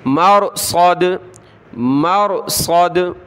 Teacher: جب رکیں گے وقف کریں گے تو مرصد صاد کی جگہ آپ نے سین نہیں پڑھنا مرصد تو معنی تبدیل ہو جائیں گے. صاد پڑھنا ہے موٹا کر کے